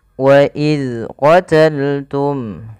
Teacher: melafalkan huruf zal yang berharakat sukun, jangan sampai ia memantul